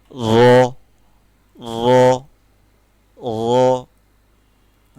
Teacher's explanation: র হচ্ছে আমরা যখন র উচ্চারণ করি তখন মোটা করে উচ্চারণটা করি।